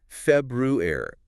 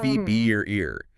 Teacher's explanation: But in everyday casual speech, a lot of native speakers, probably most, tend to drop or really weaken that first R sound, the one right after the B.